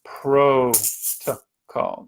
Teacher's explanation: Notice the second two syllables are short. Protocol. Just that short schwa sound there.